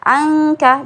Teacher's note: jadi bunyinya seperti ada huruf ng-nya, karena memang makhraj huruf k di situ